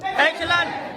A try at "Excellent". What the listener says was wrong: To get excellent, don't go down. Excellent, go up. No, excellent, excellent, excellent. Excellent, hands up. Don't say excellent, excellent, but head not moving.